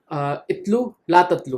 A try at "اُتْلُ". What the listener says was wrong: इतलू नहीं, उतलू। देखिए तला यतलू से अम्र, उतलू, इतलू नहीं, ہاں جناب او نصرہ سے او